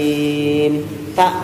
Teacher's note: Mustaqim, tak harus keluar angin, tak. Qafnya kering, jangan basah.